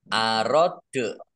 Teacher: Dal sukun bacaan kolkolah dibaca memantul.